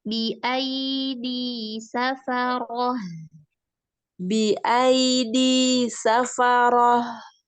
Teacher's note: Hamzah dengan ya, jangan masuk hidung, pakai suara mulut.